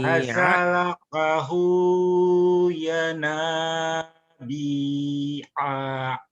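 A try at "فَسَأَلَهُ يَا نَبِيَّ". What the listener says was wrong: Tapi pendek. Ya Nabi A. Nabi A. A-nya pendek. Ya Nabi A. B-nya tapi panjang. Ya bi ya nabi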